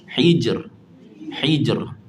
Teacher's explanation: Kena bagi ada getaran yang nipis pada huruf ra.